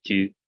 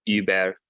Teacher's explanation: that sort of front rounded vowel u, kind of like a French tu for you, or the German über